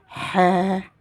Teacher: Je prolonge en 2 temps